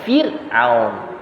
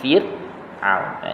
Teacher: Baca dengan nipis Fir'aun, jangan baca dengan tebal.